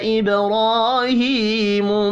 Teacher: با ساکن پر قلقلہ کریں گے